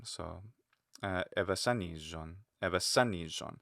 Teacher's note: Just because it's geminate, it's a double z sound. It's never single. · They may even lengthen evasanijon. But the zeta is geminate